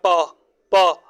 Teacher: प प में ओष्ठ लग रहे हैं, होंठ लग रहे हैं हमारे, तो ओष्ठ हो जाएगा, ठीक है।